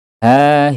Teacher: Huruf H dari pangkat tenggorokan atau aqsal halqi.